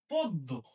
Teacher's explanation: এই অ এর উচ্চারণ সংবৃত হবে, তার মানে অ এর উচ্চারণটা ও এর মতো হবে।